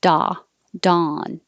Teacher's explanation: now dawn uses ah you have to open much more